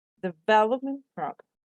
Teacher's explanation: these two words make a compound noun the main stress falls on development